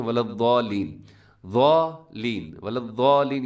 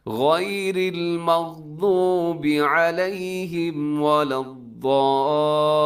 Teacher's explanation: آپ نے ضاد کو آگے لام کے ساتھ ضرور ملانا ہے، کیونکہ لام کے اوپر آپ کو تشدید بھی نظر آ رہی ہے، تو آپ نے ایسے ملانا ہے کہ آپ نے ایک سیکنڈ کے لیے رکنا بھی ہے اس کے اوپر، تاکہ یہ پتہ چل جائے کہ آپ نے جزم پر نہیں آپ نے ملایا، بلکہ آپ نے تشدید کے ذریعے سے اگلے لفظ کے ساتھ ملایا ہے، حرف کے ساتھ.